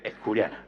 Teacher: Con aspiración de la S implosiva en la primera sílaba y con un falso, pseudo prefijo es.